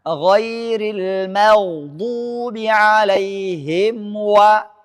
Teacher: ketika mim bertemu dengan wau, ia satu makhraj. Ketika bertemu dengan fa ia berdekatan makhraj.